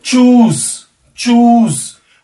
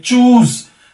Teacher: उसमें देखिए कितनी लंबी ऊ की साउंड आ रही है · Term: लंबा उ